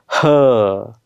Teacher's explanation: आणि ह, आता ह सुद्धा उच्चार करताना आपण फुफ्फुसातून किंवा कंठातून हवा बाहेर फेकत असतो आणि बाहेर फेकत असताना आपण अ असा आवाज काढतो